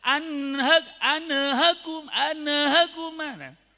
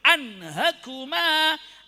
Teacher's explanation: baca nun sukunnya di sini karena sama dengan tanwin dibaca ditekan dan cepat